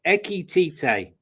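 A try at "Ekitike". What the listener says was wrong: No, Eki TK. K at the end. It's Eki TK. He's got a K on the end, Marshall.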